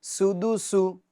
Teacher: یہ جو سین ہے اس کے اندر سیٹی کی آواز ہمیں نکالنی ہے اور اس کو سختی کے ساتھ ادا کرنا ہے، کیونکہ سیٹی نکالنا اور سختی کے ساتھ ادا کرنا یہ اس کی خوبی ہے اس حرف کی.